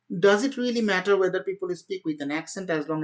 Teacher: So it's all flat. Everything is going in the same way. There is no intonation, there's no difference.